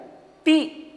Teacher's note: ह्रस्व वर्ण है जिसमें तकार है और ह्रस्व इकार है। इसका उच्चारण ती ऐसे होगा, एक मात्रा उच्चारण होगा।